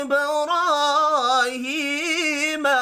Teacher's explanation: با ساکن پر قلقلہ کرنا ہے ، را کھڑی زبر کی وجہ سے اور ہا کھڑی زیر